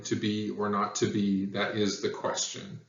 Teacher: the first syllable is unstressed and the second syllable is stressed so it sounds like da da okay heavier emphasis on the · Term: iambic poetry